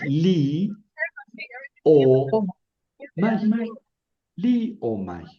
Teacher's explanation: No forma diptongo, aunque sea débil con fuerte, porque el diptongo es más bien fuerte con débil.